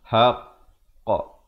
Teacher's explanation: Tahan sekejap baru lepaskan, dan bila lepaskan bulatkan mulut baru hasilkan bunyi haqqa. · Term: qalqalah sughra